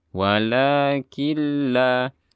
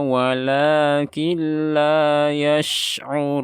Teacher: Nanti di sini ada nun mati bertemu dengan lam, idgham bila gunnah atau bi ghairi gunnah. Jadi dari kaf langsung ke lam bertasydid.